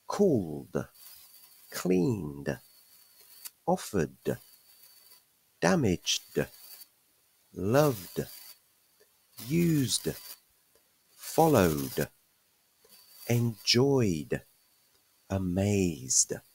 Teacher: after voiced consonants we pronounce regular past simple verbs D